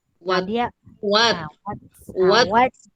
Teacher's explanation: Dia selepas kita sebut huruf ta tu dia macam ada sikit keluar macam angin. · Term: hamas